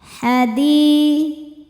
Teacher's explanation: Selanjutnya alif lam qamariyah. Karena alif lam menghadapi huruf qamariyah yaitu ha, maka lam sukun dibaca jelas.